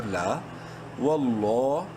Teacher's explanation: لام کو بولڈ کرنے کے ساتھ ساتھ 1 الف کے برابر لمبا بھی کریں گے